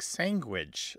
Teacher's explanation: What it is they substitute those three sounds with the closest sounds that they have in their native phonetic inventory. And it's what's called a velar nasal stop, which makes the word come out like sandwich. So it's a very nasalized, almost NG.